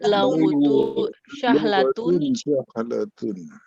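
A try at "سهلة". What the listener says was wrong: Ya, kalau dalam bahasa Arab ini memang huruf S itu ada beberapa macam ya. Ada sin, ada shin. Itu beda. Jadi di sini sin biasa aja, sahlatun.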